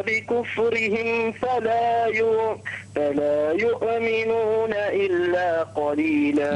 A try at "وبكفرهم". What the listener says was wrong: لا تقلقل الأحرف الغير مقلقلة، يعني وكفرهم وقتلهم فلا يؤمنون.